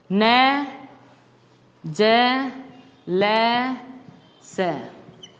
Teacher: इनका उच्चारण करते समय जीभ मसूड़े से जाकर टकराती है